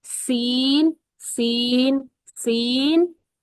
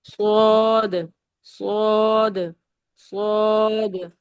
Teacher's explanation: سین باریک ہے سیٹی کی آواز کے ساتھ، اور جو صاد ہے وہ پر پڑھتے ہیں.